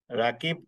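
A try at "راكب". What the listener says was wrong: র। স্যার, র দিয়ে বললে ভালো হয়, রা না, র।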